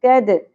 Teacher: قد bouncing sound ہوگی, مخرج سے ہلا کر پڑھنا ہے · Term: قلقلہ